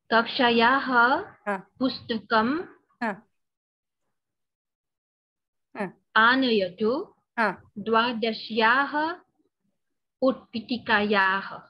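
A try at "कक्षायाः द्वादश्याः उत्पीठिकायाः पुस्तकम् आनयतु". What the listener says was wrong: Samyak.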